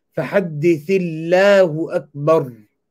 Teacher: So اللَّهُ أَكْبَر, the takbir, the Allah, اسم الجلالة, will be empty mouth.